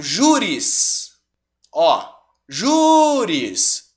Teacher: Sílaba tônica é a penúltima, logo eu tenho uma paroxítona.